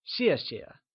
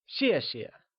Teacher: xiè can simply be broken into two similar parts except that the second time we say Xie the sound softly fades away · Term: falling tone